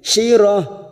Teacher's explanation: tak marbuto yang berharokat duma tanwin dibaca waqaf. Kita baca pendek. Ujungnya kita rem.